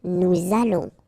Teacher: O and together, it's on. And then we'll make this little link between the two, what we call the liaison